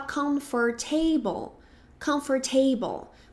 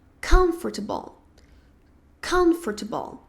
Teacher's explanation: na verdade a sílaba mais forte vai ser a primeira em inglês. Então, muita gente fala comfortable, comfortable, mas na verdade é comfortable.